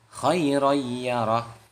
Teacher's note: ro yang ada tanwinnya bertemu dengan iya, nah itu termasuk idgham bi gunnah